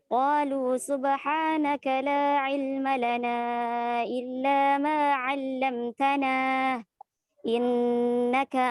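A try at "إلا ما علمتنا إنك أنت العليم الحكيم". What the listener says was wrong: بدون زيادة في المد. إلا ما علمتنا. بدون زيادة.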